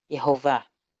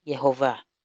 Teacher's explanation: Por lo tanto es una E, pero en este caso es una E muy, muy breve, casi imperceptible. Parece que sonara más la consonante que la vocal en sí. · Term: sheva